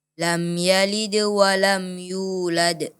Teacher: qalqalahnya dipantulkan dan dijelaskan lagi